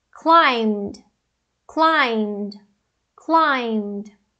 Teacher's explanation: O M é uma consoante vozeada, portanto, a gente vai usar o D.